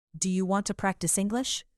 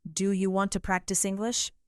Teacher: Say this question with rising intonation.